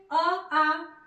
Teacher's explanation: अ आ का उच्चारण स्थान कंठ है